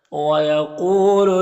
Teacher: وَيَقُولُ قاف حروف مستعلیہ میں سے اور یہاں پر واو ساکن سے پہلے قاف کے اوپر پیش ہے تو واو مدہ ہوگا، اسے ایک الف کے برابر کھینچ کر پڑھیں گے